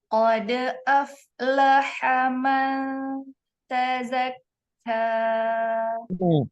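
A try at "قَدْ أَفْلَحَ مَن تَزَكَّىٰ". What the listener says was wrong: Qad aflaha mana. Itu kan berarti aflaha ada. Sebenarnya dia ada jeda sedikit. Padahal seharusnya dia hanya dialirkan saja. Qad af.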